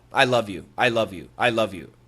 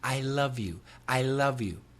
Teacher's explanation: if I want to be very clear with my pronunciation, I will probably switch to a light L